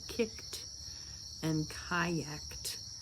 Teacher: when a verb ends with a K sound, the ED does not make a separate syllable. It makes a T sound. So it's just all in that same syllable with a T.